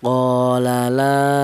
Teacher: Yang la juga berupa alif yang didalu huruf yang berharakat fathah. Sama ya, sama-sama huruf alif panjangnya yaitu satu alif atau dua harakat atau dua ketukan. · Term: mad thobi'i